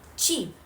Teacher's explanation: A brief stopping of air followed by a fricative release like in cheap. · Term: affricates